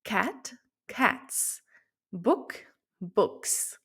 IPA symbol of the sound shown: s